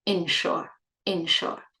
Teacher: they're pronounced exactly the same way: short /i/ at the beginning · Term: short E